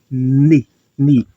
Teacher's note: Ni também é uma consoante linguodental, porque eu uso a língua e os dentes.